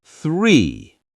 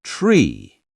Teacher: When you say the number 3, make sure you put your tongue a little between your teeth for the first sound, the th sound. It is 3, not tree.